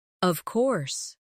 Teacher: When they are certain, their voice goes down strongly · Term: intonation